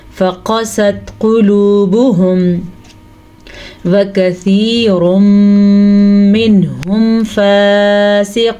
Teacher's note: قاف کو پر پڑھنا ہے کیونکہ قاف ہمیشہ ہی پر پڑھا جاتا ہے، اس قاف کو بھی پر پڑھیں گے.